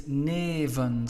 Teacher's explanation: we've got a long sound before our F, and we put it in the plural, so we add en, that F will become a V